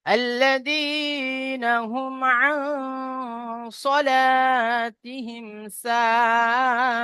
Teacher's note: তাই নুন সাকিনের আওয়াজকে নাকে তুলে একালি পরিমাণ গণনা করে পড়তে হবে।